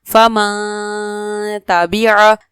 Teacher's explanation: یہاں پر نون ساکن کے بعد تا حروف اخفا میں سے ہے جس کی وجہ سے غنہ کیا جا رہا ہے